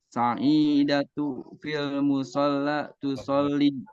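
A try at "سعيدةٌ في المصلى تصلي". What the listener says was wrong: Nah, di sini Sa'idatun. Lihat, itu ada tanwin kan? Jangan ragu-ragu mentanwinkan kalau emang membaca akhir ya. Tadi antum baca Sa'idatu. Ya, Sa'idatun gitu.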